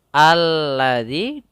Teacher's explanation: alif lam yang di mana lamnya tidak terbaca akan tetapi langsung kepada huruf setelahnya